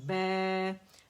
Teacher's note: اچھا سے بے نہیں پڑھیں گے، امالہ نہیں کریں گے، آواز اوپر جانی چاہیے، کھلے منہ سے ادا ہوگا